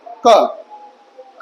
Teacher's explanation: लेकिन केवल क बोलो क तो जीभ का देखो लास्ट वाला पार्ट जुड़ रहा है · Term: जिवा मूली